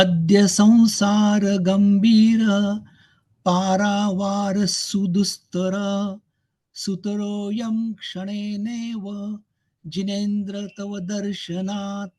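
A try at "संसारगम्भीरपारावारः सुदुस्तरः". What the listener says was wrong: जो विसर्ग के उच्चारण है वो अच्छी तरह से कीजिए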